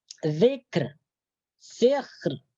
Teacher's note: Jadi ar-ra-nya ini dibaca nipis, jangan dibaca tebal.